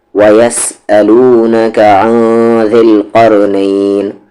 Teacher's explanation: نون ساکن کی آواز کو یہاں پر چھپائیں گے کیونکہ آگے ذال ہے، ذال اخفا لیٹر ہے، اخفا کریں گے یعنی آواز کو ہائڈ کریں گے۔